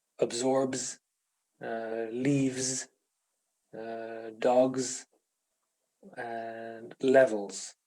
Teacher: the plural S is pronounced as Z after the other consonants